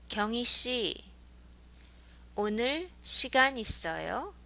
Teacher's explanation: So with a rising intonation